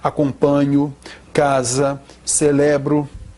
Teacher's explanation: nós temos a penúltima sílaba tônica